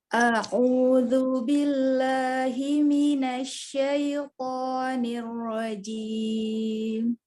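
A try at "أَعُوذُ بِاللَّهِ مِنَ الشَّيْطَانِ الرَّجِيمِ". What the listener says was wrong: Hamzah tipiskan lagi di a'udzu, lalu dikata billahi, tidak di ayun. A'udzu billahi minasyaitonir rajim.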